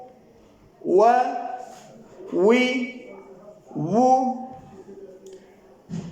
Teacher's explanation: واو دونوں ہونٹوں کو گول کرنے یا دونوں ہونٹوں کے ناتمام ملنے سے واو ادا ہوتی ہے